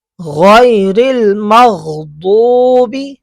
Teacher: غین ٹھیک ہے گلے کے اوپر والے حصے سے، حلق کے اوپر والے حصے سے. غیر المغضوب زبان کی کروٹ کو اوپر کی داڑوں کی جڑوں سے لگانا ہے.